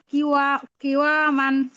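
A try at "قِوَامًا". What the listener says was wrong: ওয়াতে টান হয়ে গেছে তো, টি ওয়া মান।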